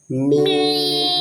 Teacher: দুই ঠোঁটের শুকনো অংশ থেকে উচ্চারণ হয়